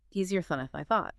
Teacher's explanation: We almost never say the A sound. It reduces down to a quick, weak sound, like thun.